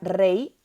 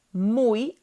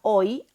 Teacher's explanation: que en el español cuando está en posición final de sílaba suena como una y latina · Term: diptongo